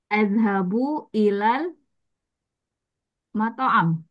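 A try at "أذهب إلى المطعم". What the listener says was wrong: Matami di harakat airnya dibaca ya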